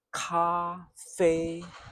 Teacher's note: So that ka has a clear puff of air at the back.